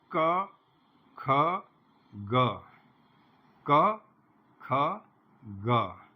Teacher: जैसे ही आप क ख बोलेंगे कान में आपको कुछ महसूस नहीं होगा, गा बोलते ही आपके कान में थोड़ा वाइब्रेशन महसूस होगा